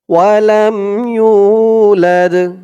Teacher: লাদ লাস্টে আওয়াজটা একটু ধাক্কা খাবে কারণ দালটা হচ্ছে কলকলার হরফ